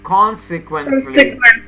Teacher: Now you have to emphasize the first syllable.